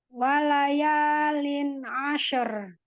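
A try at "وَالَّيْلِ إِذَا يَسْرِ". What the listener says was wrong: Wala. La. Tidak wala. Ya. Tidak ke atas suara huruf lam. Lam istifal, Bun. Jadi wala. Wala yalin ashar.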